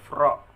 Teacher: punggung lisan dengan gusi atas, keluar darinya huruf ro